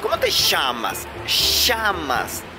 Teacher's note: En cuanto a la pronunciación, los argentinos no tienen diferencias entre la S, la Z y la C, porque las pronuncian exactamente iguales. Ahora, con la doble L pasa algo muy particular, y es que la pronuncian como sh, sh.